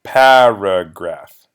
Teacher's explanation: there are three syllables in the word the stress is on that first syllable